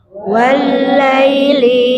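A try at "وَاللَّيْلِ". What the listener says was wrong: Wal-laili. Perhatikan lam tasydid ya, lam tasydid dihentak. Wal-laili. Ya, itu lin ya, dibaca laili, bukan lai tapi laili.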